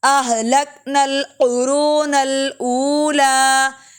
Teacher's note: پہلے لک میں کاف باریک ہے، قرو میں کاف موٹا